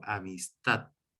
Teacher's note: Así que yo veo aquí, por ejemplo, la palabra amistad, que termina en consonante D, por tanto no lleva tilde, pero yo marco esa última sílaba con acento, acentuándola con mi entonación, en este caso, al momento de hablar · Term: palabras agudas